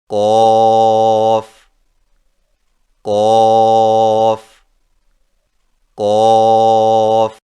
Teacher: قاف کی ادائیگی میں زبان کی جڑ کو کوے کے متصل تالو پر لگا کر موٹی آواز میں پڑھیں